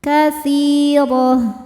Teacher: Huruf ra dibaca secara tafkhim karena berharokat di atas yaitu harokat fathah. Cara bacanya tebal. Katsirah. Ta marbutoh, harokatnya apapun termasuk tanwin kasrah berhentinya jadi ha besar, ha sukun.